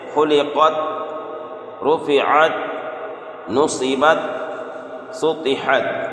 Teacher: تا ساکن کو اس طرح سے ادا کریں کہ تا کا مخرج ٹکر کھا کر الگ نہ ہو، بلکہ اس کو بغیر ٹکر کے اسے پڑھنا ہے